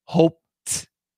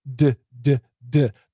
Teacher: that T is touching the alveolar ridge. The tongue is touching the alveolar ridge. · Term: T sound